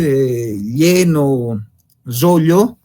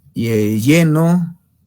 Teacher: El yeyismo es cuando una persona no puede pronunciar correctamente la L, es decir, es un fonema lateral palatal